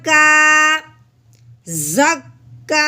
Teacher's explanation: جو کھڑی زبر ہوتی ہے وہ ایک الف کے برابر لمبا کیا جاتا ہے